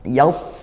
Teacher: tebalkan begitu dengan pangkalnya dinaikkan